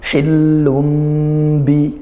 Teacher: kita baca dengung dan berubah yang awalnya bunyi nun dibaca jadi mim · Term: iqlab